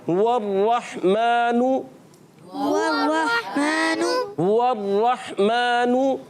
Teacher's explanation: अच्छा, वाव पर चाहे ज़बर आ जाए, चाहे ज़ेर आ जाए, चाहे पेश आ जाए, मगर वाव तो अदा ही होठों की गोलाई से होता है। और हा पर पेश आने की वजह से होंठ गोल करेंगे